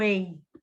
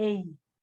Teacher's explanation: E eu tenho um eis aqui, não é irresistíveis, resistíveis, eis, que seria aí, né, parecido com o dígrafo vocálico, mas a gente vai chamar de ditongo, porque são dois fonemas de vogal, o ei, tá? Que não é nem e, nem i, é ei, como se fosse um em, mas é ei, tá?